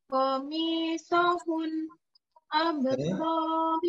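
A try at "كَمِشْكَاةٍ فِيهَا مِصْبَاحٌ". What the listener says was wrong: Mi sama hu harus sama berarti panjangnya. Komi sohu mi hu, jadi dua harokat sama-sama dua harokat, maka panjangnya juga harus mirip.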